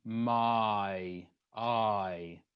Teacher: So I is an R sound, and then we turn it into the Y sound. My, I. Okay. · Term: diphthong turns